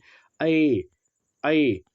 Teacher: देखिए कंठ और तालु को हम लोग क्या कहते हैं, कंठ तालव्य भी कहते हैं। कंठ और जो तालु दोनों मिलकर बोला जाता है ऐ ऐ। जब ए दोनों का आप बोल के देखिए, इसमें कंठ प्लस तालु दोनों का सहायता लिया जा रहा है।